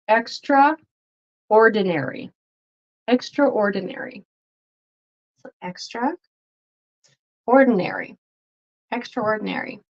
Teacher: you'll notice that the TR kind of turns into a ch, ch, ch, and a R sound. So extraordinary.